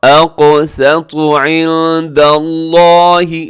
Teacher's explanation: قاف آپ نے موٹا پڑھنا ہے اور ساتھ قلقلہ بھی کرنا ہے ، قاف کا قلقلہ واجب ہوتا ہے، ضروری ہوتا ہے، اقسط